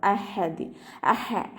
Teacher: ഹ തൊണ്ടയുടെ മധ്യഭാഗമാണ് സൗണ്ട് മഹ്റജ് വരുന്നത്, സൗണ്ടിനെ വ്യക്തമാക്കി കൊടുക്കുക കേട്ടോ.